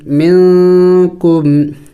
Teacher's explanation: نون ساکن ہے، اخفا کیا جائے گا یعنی ناک میں آواز چھپانا ہوگا